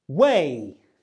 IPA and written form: weɪ (way)